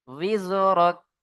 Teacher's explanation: ওয়া ওয়াযা'না আকা উইজরাক, ওয়াও জা, জের উইজ। ওয়াও হালকা বায়ের মতো উচ্চারণ হয় যখন জেরের সাথে পড়তে হয়।